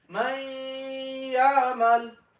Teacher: hold the nun on your nose, right? And you read ya and nun together. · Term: Adgham with gunna